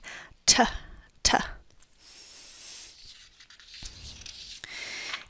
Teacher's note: most English speakers will make a T sound at the alveolar ridge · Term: alveolar sounds